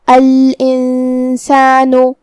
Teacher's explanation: سین حروف الاخفاء میں سے ہے اور اخفاء کا معنی ہے چھپا دینا، تو ہم حرف النون کو چھپاتے ہوئے اور غنہ کے ساتھ یہ حکم کو ادا کریں گے